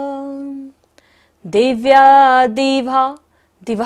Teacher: दिभा पर विसर्ग है, सारी सांस का विसर्जन करेंगे।